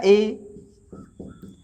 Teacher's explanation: संवृत का मतलब क्या होगा कि ए को जब हम बोलते हैं तो जो हमारा मुख होता है वो पूरा नहीं खुलता है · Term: संवृत स्वर